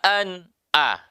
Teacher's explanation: Itu. Kemudian ketemu dengan nun sukun an. Namun nun sukunnya bertemu hamzah maka tidak boleh berdengung.